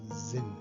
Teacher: esse S inicial tem som de Z